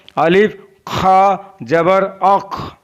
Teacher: खा हल्क के ऊपर वाले हिस्से से अदा होता है।